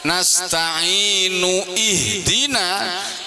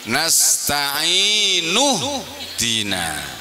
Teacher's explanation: Nasta'inu kemudian gandeng ihdina, tidak dibaca nasta'inu ihdina tapi nasta'inu dina.